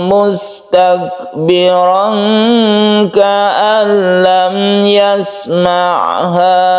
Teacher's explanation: Panjangkan tanwin bertemu dengan kaf, ini disebut dengan ikhfa.